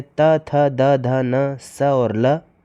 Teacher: दंत से उच्चरित होते हैं त, थ, द, ध, न, स और ल।